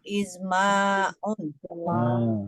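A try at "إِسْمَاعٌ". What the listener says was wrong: Harus panjang. Isma'un.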